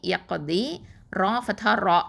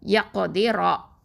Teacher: ரா ஃபத்ஹா ரா, இந்த ரா வந்து ஹெவியாக தான் உச்சரிக்கணும். வாயை நல்லா ஓப்பன் பண்ணி தஃப்ஹீமாக சொல்லுங்கள்